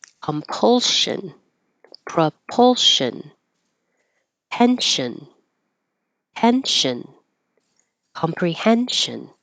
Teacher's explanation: It will sound like shin or shun when it follows an L or an N. So there's the L, compulsion, propulsion, pension, tension, comprehension.